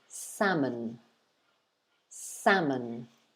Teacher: it's two syllables two parts the stress or the emphasis is on the first syllable